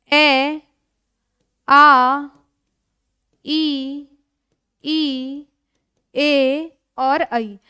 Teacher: उच्चारण करते समय होठ गोलाकार नहीं होते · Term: अवृत्तमुखी